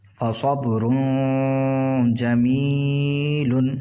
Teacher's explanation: یہاں پر اخفا ہوگا کیونکہ تنوین کے بعد جیم آ رہا ہے